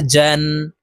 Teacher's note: জিম আলিফ 2 জবর জান। জিম হরফ জিহ্বার মধ্যখান থেকে উচ্চারণ করব, কারণ জিমের মাখরাজ জিহ্বার মধ্যখান থেকে হবে। জিম আলিফ 2 জবর জান।